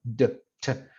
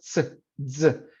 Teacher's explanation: Oclusiva y fricativa. Empieza como oclusivo y termina como fricativo. Entonces hay un cierre completo como t y z con la primera parte, la t y la d. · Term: africado